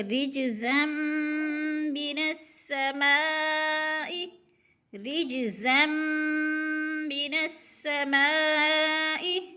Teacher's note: نون کو سین کے ساتھ ملا کے سختی سے پڑھیں گے کیونکہ سین مشدد ہے ، شد ہے شین کے اوپر، اور درمیان میں جو الف · 2 زبر تنوین کے بعد آگے میم مشدد ہے، یعنی تو زا کو میم کے ساتھ ملا کر تھوڑا سا سختی سے پڑھیں گے